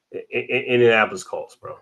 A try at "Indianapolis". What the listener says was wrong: Indianapolis. Ain't no D. Ain't no D in there.